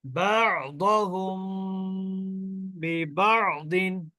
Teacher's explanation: মিম সাকিনের পরে ইকফার অক্ষর যদি বা আসে তাহলে ওই মিম সাকিন কে গুন্না সহ পড়তে হবে